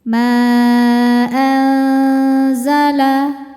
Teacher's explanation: Maka manya panjang boleh empat boleh lima harakat. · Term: mad jaiz munfasil